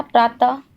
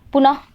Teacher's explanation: जब हम लोग अतः का उच्चारण कर रहे हैं तो अह आ रहा है ना लास्ट में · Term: विसर्ग